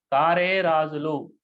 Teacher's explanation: కారే రాజులు అనేటువంటి పాదంలో ఇక్కడ కా అనేటువంటి దీర్ఘం ఉంది కాబట్టి గురువు, రే అనేటువంటి దానికి కూడా దీర్ఘం ఉంది కాబట్టి గురువు, రా అనేటువంటిది గురువు ఉంది కాబట్టి దీర్ఘం ఉంది కాబట్టి గురువు.